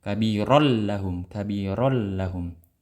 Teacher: Diidghamkan tapi jangan digunnah, jangan ditahan. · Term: idgham bi ghairi gunnah